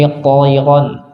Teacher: tayran ro-nya tebal, to-nya tebal, ya-nya yang tipis